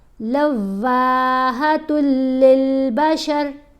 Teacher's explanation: تا کو لام سے ملانا ہے, واؤ کو تھوڑا سا لمبا کر کے پڑھنا ہے